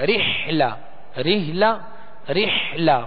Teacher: ہا درمیانی حلق سے ہا کو ہا سے امتیاز کرنے یعنی فرق کرنے کہ ہا نہ بن جائے